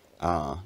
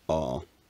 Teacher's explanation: words like father is also more fronted in this accent, ah rather than ah.